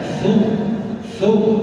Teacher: Ujung lidah bersentuhan dengan gigi seri atas, bergesekan, bukan? Jadi suaranya ada gesekan.